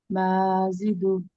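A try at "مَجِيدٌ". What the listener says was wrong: আহ, মা টান হবে কেন? মিমের পরে তো খালি আলিফ নাই।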